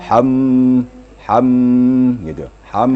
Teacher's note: wajibul gunah jadi Nun musyaddadah mim musyaddadah itu namanya wajibul gunah wajib berdengung jadi ada ditahan suara ya kira-kira dua dua ketukan